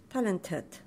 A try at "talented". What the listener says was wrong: Need to be clear on the second D. Talented.